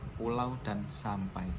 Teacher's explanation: Sebaliknya, ada diftong turun, di mana vokal pertama diucapkan dengan sonoritas penuh, sementara vokal keduanya melemah dan mengaruhi ke bunyi non-vokal.